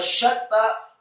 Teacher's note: syaknya dibaca tafkhim tebal fathah 1 harokat, kemudian setelahnya ditekankan ke huruf ta yang tasydid, syatta, dan taknya setelah ditasydidkan fathah 2 harokat karena setelah huruf ta ada seperti huruf yang sama dengan huruf ya sukun meskipun tidak ada titik 2 seperti ya sukunnya.